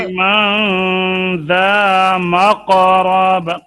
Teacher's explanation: قاف میں قلقلہ ہے، موٹا ہے قاف